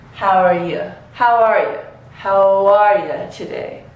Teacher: in how are you, we actually need to connect these sounds with a W. How are you, right?